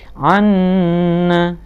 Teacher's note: Anna ini bacaan gunnah karena ada tasdid di sini